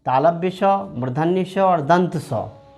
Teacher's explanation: तालव्य स, मूर्धन्य स और दंत स, ये तीनों अघोष होता है